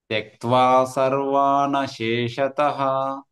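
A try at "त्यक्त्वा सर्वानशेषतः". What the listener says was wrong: సర్వాన్ plus అశేషతః అనేటప్పుడు నానే అంటాము, కానీ అశేషతః అనేది హైలైట్ అవ్వాలి. త్యక్త్వా సర్వాణ శేషతః. సర్వాన్ నాని వాతో సర్వాతోటి పంపించేసేయాలి. ఓకే, సర్వాకి గ్యాప్ ఇవ్వద్దు. సర్వాన్ అదొకటే స్ట్రెచ్ లో రావాలి. అశేషత సెపరేట్ గా రావాలి. నా అనేది సర్వాన్ తోటే ఉండాలి.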